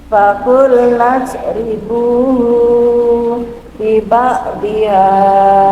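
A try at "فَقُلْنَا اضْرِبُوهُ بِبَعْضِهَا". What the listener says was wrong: Kalau bukan matsilah, hunya itu tidak boleh dipanjangkan. Hu bibak biha. Hak domirnya tidak boleh dipanjangkan. Fakul ribu bibak.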